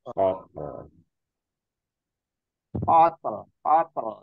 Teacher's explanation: Jadi ada kayak desisan sedikit, matinya tak, terus baru masuk ke lam setengah harokat gitu.